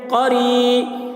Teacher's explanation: قو، را یا زیر ری، یا ساکن سے پہلے زیر ہے، یا مدہ ہوا، اس لیے یا مدہ کو ایک الف کے برابر کھینچ کر پڑھیں گے